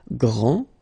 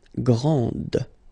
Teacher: Okay, so we've got a little bit the same situation here as we had previously with français and française, because we don't pronounce the final S in français, and it's exactly the same thing. This final D is not pronounced.